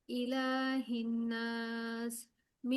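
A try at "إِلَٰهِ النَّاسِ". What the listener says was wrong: আপু গুন্নাটা হচ্ছে না তো। ইলাহিন নাস, নাকি একাধিক পরিমাণ গুন্নাটা রাখতে হবে, হ্যাঁ?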